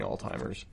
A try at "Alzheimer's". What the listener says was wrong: Alzheimer's. There's no T. Alzheimer's.